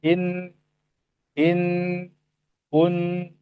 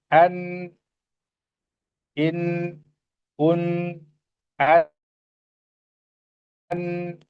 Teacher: harus ada suara hidungnya ketika menuturkan huruf nun. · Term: gunnah